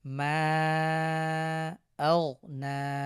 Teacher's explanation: মিম আলিফ জবর মা, মাদের হরফ এক আলিফ, এরপরে লম্বা হামজা এসেছে, সুতরাং আমরা এখানে 3 আলিফ টেনে পড়ব।